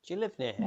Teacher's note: You can be shortened to ya with the schwa sound.